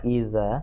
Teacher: Idza itu huruf zal, ujung lidah dengan ujung gigi atas.